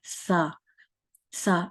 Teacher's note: देखिए सा में कैसी आवाज निकल रही है कि आपके जो ऊपर वाले दोनों दांत हैं उनके उसके साथ जुबान लगती है और थोड़ी सी, समझ लें थोड़ी सी जुबान की नोक बाहर की तरफ आती है। जो ऊपर वाले दांतों को टच करते हुए ये जो जुबान की नोक है थोड़ी सी बाहर की तरफ आती है